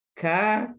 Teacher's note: huruf Kaf disebut dengan udara yang sedikit saja keluar